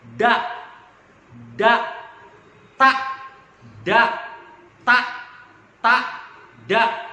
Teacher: Tetapi dalam pembacaan dalnya hilang digantikan dengan ta yang bertasydid. Karena dal dan ta sama dalam makhrajnya tapi beda dalam suaranya.